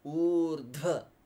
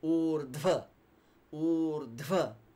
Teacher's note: The u is long, then you have dha, where you need to push more air from your abdomen, and that's in conjunct with va.